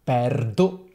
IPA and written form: ˈpɛrdo (perdo)